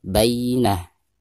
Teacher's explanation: Adapun tak marbuto di sini ketika diwaqafkan maka suara tak tersebut berubah menjadi hak sukun ya.